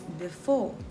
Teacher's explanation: with stress on the second syllable